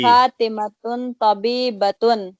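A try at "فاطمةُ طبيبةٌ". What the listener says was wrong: جی فاطمہ تن پڑھا تھا آپ نے پہلے، پھر آپ نے ایک پیش اس کو ختم کر دیا، کیوں؟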